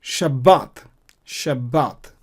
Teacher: But I'm pronouncing B double, like I'm doubling the B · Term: strong Dagesh